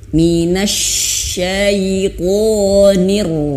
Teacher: ada yang berpendapat getarannya itu cukup 2 kali saja ya, cukup 2 kali saja